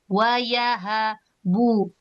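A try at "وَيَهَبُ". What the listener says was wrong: Wayahabu. Nah, hati-hati haknya tipiskan lagi. Ha, ha.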